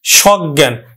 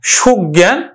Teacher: উচ্চারণ করব কিন্তু অজ অজ্ঞ অজ্ঞ নেতিবাচক অর্থ প্রকাশ করছে আবার এই সহিত অর্থে স কিন্তু আবার বিবৃত উচ্চারণ হবে